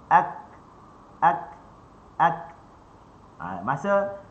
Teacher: Masa kita sebut ka, kita rapatkan pangkal lidah dengan lelangit. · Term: syiddah